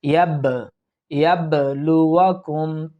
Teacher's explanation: ইয়া বা জবর ইয়াব, অর্থাৎ কলকলা, অর্থাৎ মাখরাজের মধ্যে একটু ধাক্কা দিয়ে পড়ার চেষ্টা করব